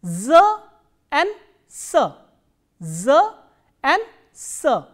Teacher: they are pronounced with the tip of tongue slightly touching the lower teeth